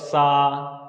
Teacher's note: ये जो दंती वाला सा है इसको बोलो सा, तो दांत में टच कर रहा है ना